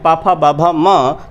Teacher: ओष्ठ्य की अगर हम लोग बात करें तो पा वर्ग के जो सदस्य हैं पा फा बा भा म, तो ये आपके ओष्ठ्य कहलाते हैं, क्योंकि पा फा बा भा जब हम बोलते हैं तो दोनों ओंठ परस्पर मिलते हैं और ध्वनि तब निकलती है, इसलिए ये आपके ओष्ठ्य व्यंजन भी कहलाते हैं।